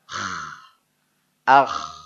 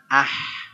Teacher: kemudian akh ini beda lagi Bukan ah Ini mah akh ngagerok huruf dia ditenggorokkan tempat dahak